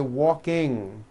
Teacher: with the ng sound. Comes out of your nose. It's a combination of an n and a g.